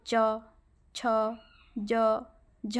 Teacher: फिर तालु अगर देखेंगे, तालु को जब बोलेंगे च वर्ग जब बोलेंगे, ठीक है, च, छ, ज, झ, आप फील करेंगे बोलते समय कि तालु को छू रहा है ना जिह्वा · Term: तालव्य